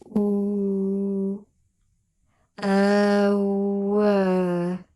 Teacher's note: the tongue arches up and pulls back towards the soft palate, and the lips round into a tight circle but do not touch